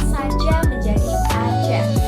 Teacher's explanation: Contoh lainnya adalah saja menjadi aja, yang juga mengalami aferesis karena fonem S dihilangkan.